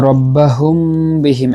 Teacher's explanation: মিম সাকিনের পরে বা আসছে ইখফায়ে শফুই